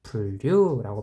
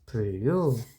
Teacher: 분명히 니은인데, 표기상 니은인데 발음을 해보니 리을, 즉 유음으로 발음하게 되죠. 표기상 니은이 발음을 했을 때, 즉 음운이 리을로 유음으로 변화하는구나. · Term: 유음화